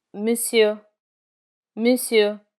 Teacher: In monsieur, the final R is never pronounced.